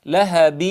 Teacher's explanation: لهب هنا توجد غنة لأنه إدغام بغنة